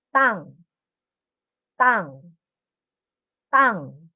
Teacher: Strong word but not aspirated. Ibig sabihin, hindi OA yung pagka-pronounce. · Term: double consonant T